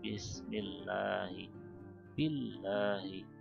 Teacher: Lam di sini, ya, di lafaz Allah itu tipis, ya. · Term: lam tipis